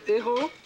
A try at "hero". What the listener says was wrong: Yeah, but in English, we pronounce the H. Hero.